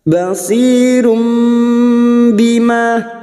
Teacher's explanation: Basirum duma tanwin bertemu ba namanya bacaan iqlab, nun sukun atau tanwin yang bertemu dengan huruf ba namanya bacaan iqlab, siap menukar atau membalik. Menukar seperti bertemu mim namun siap membunyikan huruf ba dan disertai mendengung selama 3 harokat